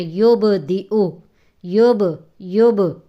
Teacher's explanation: جیسے آج کے سبق میں یبدئ، یب با ساکن ہے، اس پہ قلقلہ ہو رہا ہے